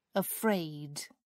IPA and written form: əˈfreɪd (afraid)